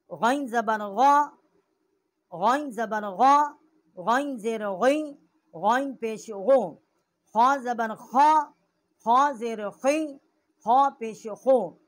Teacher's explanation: ادنائے حلق جو ہے اس کا مخرج ہے، جو منہ کی طرف والا حصہ ہے۔ غین اور خا جو ہیں یہ دونوں حروف کا مخرج جو ہے یہ ادنائے حلق سے ہے۔